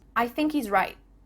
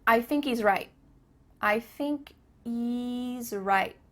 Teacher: There's no H happening here.